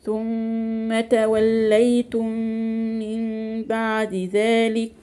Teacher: هنا ميم غنة مشدد. توليتم من ميم وراها ميم على طول اهي ادغام كامل بغنة